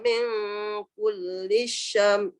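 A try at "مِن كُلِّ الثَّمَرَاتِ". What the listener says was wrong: bukan shin. Min kulli thamarat.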